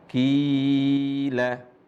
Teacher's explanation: Jadi ada ya sukun, sebelumnya ada huruf qaf yang harokatnya adalah kasrah, maka huruf qaf yang harokat kasrah dibaca panjang 2 harokat. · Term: huruf mad